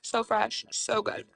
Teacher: Why do influencers always talk like that? Why do they always have a vocal fry?